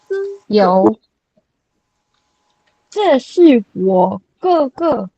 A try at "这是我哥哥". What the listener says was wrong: no higher Sing it. Okay, you need to learn to sing. Okay, now when I test you, if your tones are not high enough, I will reduce your point. Okay, so 哥哥 this week there's so many first tones.